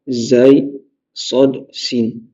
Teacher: le bout de la langue en sifflant. On a le point de sortie des lettres de sifflement.